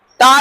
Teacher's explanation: ता जब बोलोगे तो दांत पर जीभ टच करेगी।